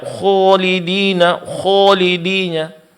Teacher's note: mencampur pengucapan huruf alif yang suaranya tercampur dengan huruf wau